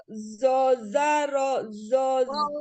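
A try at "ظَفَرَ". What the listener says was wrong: Ujung lidahnya keluarkan. Itu di huruf zal, di huruf zo ya, masih harus diperbaiki Mi.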